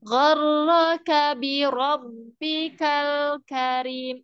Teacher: Rabb itu huruf ba yang tasdid. Suaranya tidak terputus.